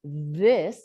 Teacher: you can hear my vocal cords engaged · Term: chordal involvement